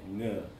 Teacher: when you say ng, actually the back of your tongue touches the roof of your mouth. So ng, kind of like if you said singer, and then you said inger, and then you just said ng'er, and you'd get that ng.